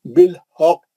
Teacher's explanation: کلمے کے آخری میں آیا ہے نا خلخلہ کبرا ہے، اور تجدید کے آنے کی وجہ سے اور بھی سختی سے پڑھے.